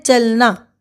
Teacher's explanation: अ का पूर्ण उच्चारण नहीं हो रहा है तो च पे ज्यादा जोर दिया जा रहा है